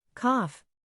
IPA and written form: kɒf (Cough)